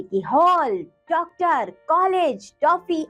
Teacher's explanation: कुछ शब्दों जैसे कि हॉल, डॉक्टर, कॉलेज, टॉफी आदि में ओ ध्वनि होती है। यह ध्वनि आ और ओ के बीच में स्थित है।